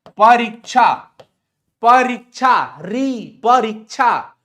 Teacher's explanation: री पे जोरदार पड़ रहा है ना, ज्यादा समय लग रहा है।